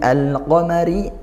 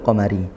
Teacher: al bertemu huruf qof izhar qamariyah karena lam takrifnya terbaca